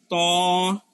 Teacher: জিহ্বার আগাটা উপরের দাঁতের গোড়ার মধ্যে রাখেন, রাইখা সেটা মুখ টুক বাঁকা হবে না, কিচ্ছু হবে না, আপনি মোটা করে একটা শব্দ করবেন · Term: তোয়া